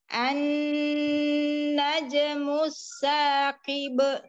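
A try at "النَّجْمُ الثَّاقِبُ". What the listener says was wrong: Kenapa balik lagi ada hamzah? Tapi jangan diakhiri dengan hamzah.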